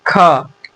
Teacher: ख बोलते समय अंत में अ भी आ रहा है।